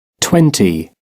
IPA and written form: ˈtwɛnti (twenty)